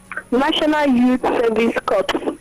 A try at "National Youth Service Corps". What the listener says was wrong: Okay, it's pronounced core, not corps. National Youth Service Corps. Yeah, so that is pronounced CORPS is not cops. You have CORPSE as cops and CORPS as core. Esprit de corps.